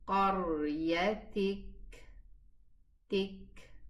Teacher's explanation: It has hams, a whispering sound at the end.